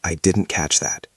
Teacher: The stress is on catch.